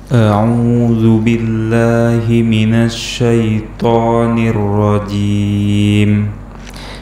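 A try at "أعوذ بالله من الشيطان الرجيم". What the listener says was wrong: Baik, itu jimnya dua harokat saja. Dan ini boleh sebenarnya, karena ini mad adid li sukun, boleh dibaca 2, 4 ataupun 6. Tapi rekomendasi anak pribadi bahwa ketika kita sedang latihan, maka kita panjangkan 4 harokat.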